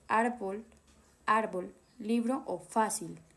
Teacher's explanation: La fuerza de voz está en la penúltima sílaba. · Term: palabras graves o llanas